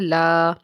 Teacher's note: والا کل لا، الف سے پیچھے زبر ہے اس لیے لام الف لا کو ہم کھینچ کے پڑھیں گے 1 الف کے برابر